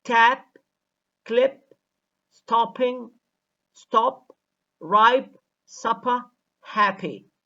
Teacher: p has less aspiration when it occurs medially or between vowels or finally